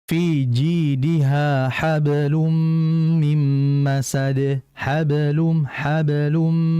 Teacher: dikarenakan masih ada kata berikutnya sehingga qalqalah tidak terlalu jelas di situ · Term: qalqalah sughra